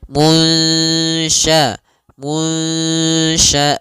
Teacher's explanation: Munsyaatu ya samarkan kepada makhraj huruf syin langsung. Seakan-akan kita ketika melafalkannya langsung mau melafalkan huruf syin. Kemudian sya'a pada lafal a ada mad badal adanya hamzah bertemu dengan alif panjangnya dua harakat. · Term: samarkan nunnya